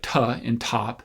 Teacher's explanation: folds and when you make a t like ta and top you leave your vocal folds open so you release the t and then air starts to flow out between your vocal folds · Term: aspirated tee